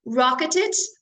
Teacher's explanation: you pronounce Ed as an extra syllable because the word ends in t